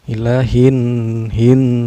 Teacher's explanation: Cara bacanya alif lamnya tidak dibaca, melainkan memasukkan dari huruf H ke huruf nun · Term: alif lam syamsiah